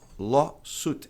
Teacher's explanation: Law, tônica no O longo, lawsuit.